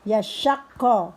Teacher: Yashak, shinnya sya besar dibaca ditekan dulu karena ada tasydid. Yashakko, qafnya juga ditekan karena bertasydid